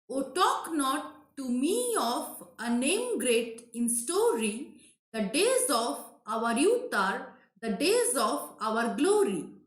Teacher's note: here you can see that o and not are unstressed in the middle talk is stressed me is stressed name is stressed story sto is stressed right so oh talk not to me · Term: amphib